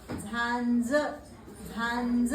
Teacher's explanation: >> नाही >> नाही वळली झांज झांज अन आला बघा अन झांज झांज कळतय म्हणजे तुमचा हा शब्द कसा झाला बघा झा नंतर नंतरचा हा अनुनासिक तो पण अर्धाच घ्यायचा पूर्ण घ्यायचा नाही आणि त्याला जोडायचा ज